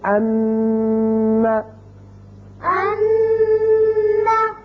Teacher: جب ان کے اوپر شد آ جائے تو وہاں آواز رکے گی ایک الف کے برابر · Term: نون مشدد